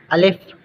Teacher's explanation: الف منہ کے خالی حصے سے